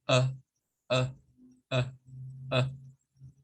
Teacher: es un sonido que se genera acá en nuestras vocal cords y no movemos la lengua, no movemos los labios, solo hacemos uh, uh, uh. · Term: schwa